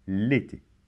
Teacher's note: Ça se prononce comme si, dans l'été, comme si le L était collé.